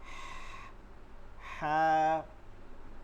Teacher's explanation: এটা হচ্ছে গলার মধ্যখানে, হলকের মধ্যখানে নিতে হয়, হালকা আওয়াজ ফিসফিস আওয়াজে করে পড়তে হয়।